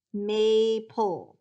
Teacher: and here it is may pull that first syllable is open with a long a